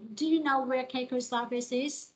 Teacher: Đây là câu hỏi không có từ để hỏi như vậy sẽ đi lên ha.